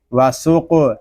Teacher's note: وسوق، اس کو وسوق اس طرح نہیں پڑھیں گے، اس کو پڑھیں گے وسوق، سین میں سیٹی کی آواز بھی آئے گی